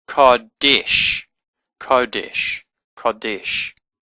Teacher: so it's a sh sound, not a s sound.